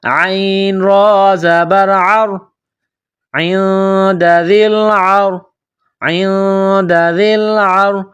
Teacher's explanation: را ساکن سے پہلے والے حرف عین پر زبر ہے تو ہم را کو موٹا پڑھیں گے، اس طرح عین را زبر عر، عند ذی العر، عند ذی العر۔